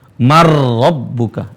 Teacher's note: Huruf pertama yang sukun melebur ke huruf ro, seolah-olah hilang. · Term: idgham